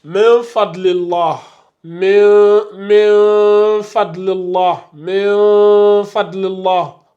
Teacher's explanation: On ne fait pas la fusion, mais on fait un peu de runna et on dissimule le noun. On ne prononce pas le noun. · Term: dissimulation avec nasillement